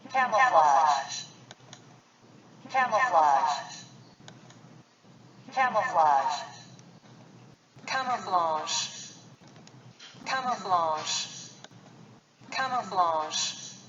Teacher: 원래는 G 발음이 나야 되는데 이 유성음이 그 무성음화돼서 가끔은 쉬에 가까운 발음이 들리게 됩니다.